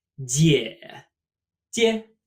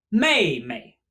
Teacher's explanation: where the character is just repeated twice to make the word we will drop the second tone